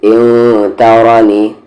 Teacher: ای کو نام ہے ان، تا پہ زبر تا، را پہ زبر را، نون پہ زرنی. ان ترانی، را ہیوی ہوگا، نون ساکن کے بعد تا ہے، اخفا ہوگا